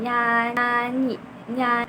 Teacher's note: Untuk nyan lidah tengah itu menempel ke langit-langit sambil bergetar.